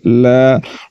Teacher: لا کے اوپر کھڑا زبر ہے ایک الف کے برابر کھینچ کر پڑھیں گے